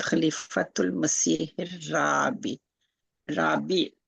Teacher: ये हा को रा के साथ जोड़ेंगे, लाम नहीं पढ़ा जा रहा है, इदगाम हो रहा है, और शद्दा भी इसकी निशानी है, जहाँ इदगाम होगा अगले लेटर पे शद्दा आती है, और लाम के ऊपर सुकून का निशान नहीं होता।